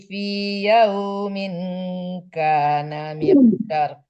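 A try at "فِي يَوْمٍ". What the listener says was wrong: Ya, fi yaumin itu hukumnya ikhfa hakiki didengungkan ya Bunda. Jadi yaumin jangan ditekankan nun ya. Kaang yaumin ka.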